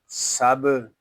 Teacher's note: کاف میم فوقکم، سین با زبر سب، یہاں سین حروف صفیریہ میں سے ہے، اس میں سیٹی کی آواز آئے گی · با ساکن ہے، اس میں کلکلہ خوب ظاہر کریں گے